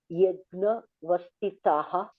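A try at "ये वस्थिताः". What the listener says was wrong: Yajna, where is yajna? Ye vastitaha.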